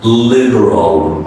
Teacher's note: The last L is pronounced as an O sound.